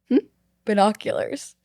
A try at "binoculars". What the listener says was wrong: It sounded like you said binoonculars.